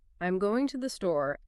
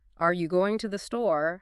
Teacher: I'm going to the store ends on a falling intonation. It's a statement of fact. But are you going to the store has a rising intonation at the end, indicating a question.